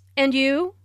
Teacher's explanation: Notice the rising intonation on and you. This shows that is interested in what Jane has to say.